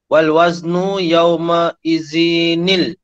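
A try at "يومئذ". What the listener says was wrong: Yauma izinil. Bila kita baca yauma izinil, salah sudah. Maknanya kita menambah huruf.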